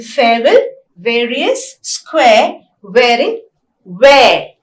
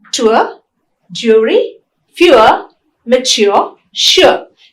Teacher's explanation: both these diphthongs are centering diphthongs because the tongue glides towards the central vowel A